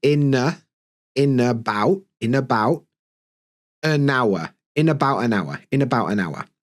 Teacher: Because in, then about is going to steal the N